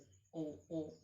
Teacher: ओठ का और कंठ का दोनों का कार्य है, इसमें दोनों से उच्चारण हो रहा है।